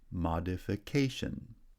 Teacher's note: the first syllable receives secondary stress, and the placement of primary stress has shifted to the fourth syllable